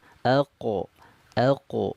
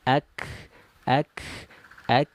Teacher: pangkal lidahnya menyentuh ke langit-langit lunak sedangkan Kaf ini agak ke depan daripada huruf qf menyentuhnya ke langit-langit lunak dan keras